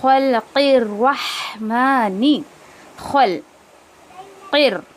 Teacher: قاف کا را میں مرج کریں گے. میم کو 2 کاؤنٹ دیں گے کھڑا زبر کی وجہ سے.